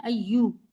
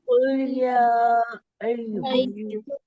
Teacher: अय्यो नहीं पढ़ना है, मजहूल हो जाएगा, अय्यू पढ़ना है, अय्यू, है ना।